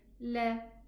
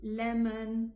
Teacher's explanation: you use the tip of the tongue just touching the gum of the upper teeth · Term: English lamb